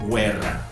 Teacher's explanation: Normalmente en español, cuando tenemos una QUE o QUI, nosotros no pronunciamos la U. En italiano la tienes que pronunciar.